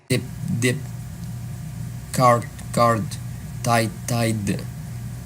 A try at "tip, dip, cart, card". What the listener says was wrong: Yeah, you can work on the T. So you have tip, dip, cart, card, tight, tide, train, drain, fat, fad.